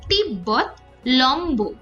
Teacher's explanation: ব এর সঙ্গে এবং ম এর সঙ্গে ব ফলা যুক্ত হলে উচ্চারণ অবিকৃত থাকে